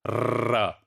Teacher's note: in the case of trill, your tongue is set in motion, right? It is set in motion and it is striking continuously